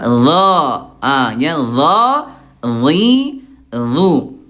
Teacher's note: Cuma kalau d ayah bunda dia tebal dengan cara mengangkat pangkal lidahnya.